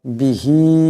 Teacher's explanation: এখানে হার উপর মদ আছে এটাকে লম্বা করে পড়তে হবে